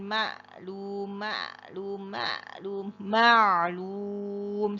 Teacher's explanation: huruf Ain itu aliran suaranya adalah bainiah atau tawasut